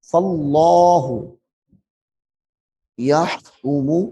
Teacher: اس میں جلالت اللہ کا لام موٹا ہوگا